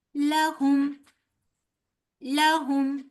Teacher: ला को लंबा नहीं करेंगे इस बात का बहुत अच्छे से ख्याल रखिएगा कि लाम के ऊपर पड़ी हरकत है लिहाजा फौरन जल्दी से अदा करके आगे हुम की अदायगी करेंगे